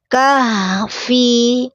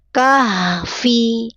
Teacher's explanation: Hanya di sini menggunakan H besar. Tenggorokan bawah. Mengalir suaranya.